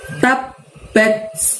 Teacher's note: Nah, di situ batnya ada tak sukun, maka bunyi huruf T diikuti desis. Jadi prakteknya begini nak, tab bat gitu. · Jadi pada saat mengucapkan tab, tahan selama 2 ketukan atau 2 harokat baru diikuti bunyi bat gitu ya. Nah, di situ batnya ada tak sukun, maka bunyi huruf T diikuti desis. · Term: ba tasydid